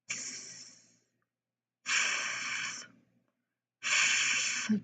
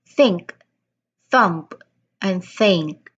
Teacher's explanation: the th sound which is a voiceless. It should not vibrate when we say it or when we pronounce it. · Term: voiceless th sounds